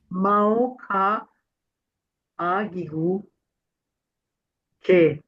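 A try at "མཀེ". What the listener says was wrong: Ouais, mais quand tu épelles, c'est Mao Ka Agigu I. Ça, tu dois le dire, hein. Mao Ka Agigu I. Et puis à la lecture, tu diras Ke, hein, parce que c'est le mot, c'est Namka.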